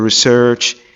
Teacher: So the long is pronounced between the mid close and the mid open, and also just like the schwa sound, very much like it